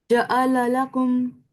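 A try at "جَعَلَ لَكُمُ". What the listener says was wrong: Okay, much better.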